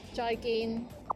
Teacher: both of the syllables, joy and gin, are both mid-flat tones